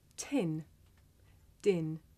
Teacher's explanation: Did you notice how the puff of air at the beginning of tin makes the paper move